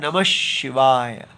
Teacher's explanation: जो नमः के बाद विसर्ग है वह श कर दी गई है श हो जाता है तो बन जाता है नमः शिवाय वैसे